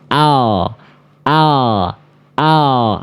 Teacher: Bahasa mudahnya ya atau ee sisi lidah ee atau pinggir lidah ya. Nah, huruf lam itu dilafalkan dari samping lidah